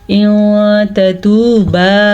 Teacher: یہاں پہ ان کے نون ساکن کے بعد تا آیا ہوا ہے جو کہ حروف اخفا میں سے ہے، تو اس لیے ہم نون ساکن کی آواز کو چھپا کے پڑھیں گے